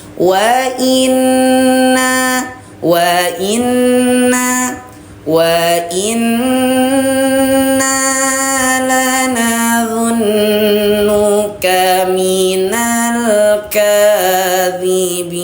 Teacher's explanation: Tahan suara 2 harokat sertakan juga dengan dengung, hukum bacaannya gunnah.